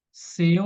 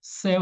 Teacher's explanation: seu não recebe porque é fechado céu recebe porque é aberto